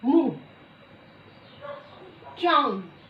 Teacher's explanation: वायु निकलती है वो मुख और नाक दोनों की सहायता से बाहर निकलती है।